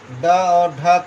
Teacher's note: ड और ढ को उच्चारण करते समय जिह्वा ऊपर उठकर झटके के साथ शीघ्रता से नीचे आती है, अतः इन्हें उच्छिष्ट व्यंजन कहते हैं। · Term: उत्क्षिप्त व्यंजन